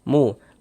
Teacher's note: Sebelum waw sukun ada ini nih, ada harokat dhammah nih, ada tanda baca dhammah. Ada waw sukun, sebelum waw sukun ada harokat dhammah, maka huruf yang memiliki harokat dhammah ini kita baca panjang nih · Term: mad tabi'i